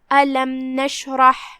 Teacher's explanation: کلمت نشرح میں یہاں حرف الشین ہے. شین کی ادائیگی زبان اور اوپر کے تالوں کے درمیان سے ہے، لہذا ہم اسے وہیں سے ادا کریں گے اور اسے جزم سے پڑھیں گے کیونکہ اس پہ جزم ہے. · آخری میں ہا ہے، اس کی ادائیگی حلق کے درمیان والے حصے سے ہے، لہذا ہم اسے وہیں سے پڑھیں گے اور جزم کو بھی ظاہر کریں گے. · یہاں را ہے اور اس پہ زبر ہے، تو یہاں را کا حکم ہوا تفخیم، لہذا ہم اسے بھاری آواز میں پڑھیں گے